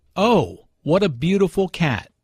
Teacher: “What a(n) …” is followed by an adjective, which is usually emphasized. Notice the emphasis on “beautiful” here.